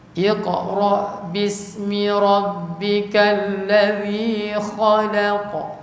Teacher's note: Kemudian tebal nipis tebal kha tebal la nipis qa tebal balik.